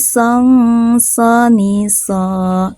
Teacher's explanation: Masih, song, soni, ini ada tanwin fathah menghadapi huruf sod, maka tanwin fathahnya dibaca samar, ditahan sebentar sambil didengungkan dan siap-siap mau melafalkan huruf sod